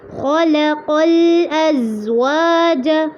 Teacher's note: خلق میں خوف اور قاف دونوں کو پر کرنا ہے، لام کو باریک رکھنا ہے